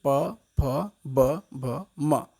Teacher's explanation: ये वर्ण जो हैं ये ओष्ठ से बोले जाते हैं, ओठ से बोला जाता है। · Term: ओष्ठ्य